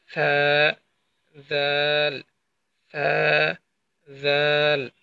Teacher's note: অতঃপর সা এবং দালের মাখরাজটা হচ্ছে আপনার সামনের উপরে ২ দাঁতের আগা এবং আপনার জিহ্বার আগা একসাথে সংযুক্ত হয়ে এই ২টা হরফ উচ্চারিত হবে।